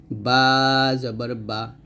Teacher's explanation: বা টা আমরা দুই ঠোঁট মিল করে অর্থাৎ দুই ঠোঁটের ভিজা অংশে মিল করে আমরা বা টা উচ্চারণ করব